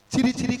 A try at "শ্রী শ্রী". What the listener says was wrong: মাসি নামগুলো ঠিকঠাক করে বলো। আরে মাসি ওনার নাম ছিরি ছিরি না, বলো শ্রী শ্রী। বলো শ্রী শ্রী। শ্রী শ্রী। বলো শ্রী শ্রী।